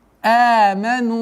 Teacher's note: Здесь у нас долгота в размере четырех огласовок даммы.